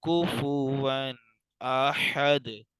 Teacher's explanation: یہاں غنہ اس لیے نہیں کیا کیونکہ آگے حمزہ حروف حلقی میں سے ہے